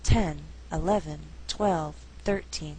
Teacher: Numbers like 13, 14, 15, and so on have shifting stress, meaning it can be on the first or second syllable. Now when we count, the stress is on the first syllable.